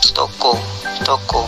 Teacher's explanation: Vokal O. Vokal belakang, sedang atas, bundar, semi tertutup